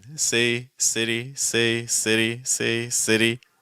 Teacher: Okay, notice how the sound difference between those isn't that great, and it allows us to keep breath flowing. So again, say, no T sound or fast D sound at all, versus city with a slight fast D sound